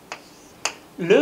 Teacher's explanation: 시작은 누구랑? 니은이 하는 곳과 시작되죠. 근데 마지막 발음 어떻게 돼요? 르 이렇게 꺾인단 말이에요. 그래서 혀가 한번 웨이브를 친다고 해서 리을 모양인 거예요 이게.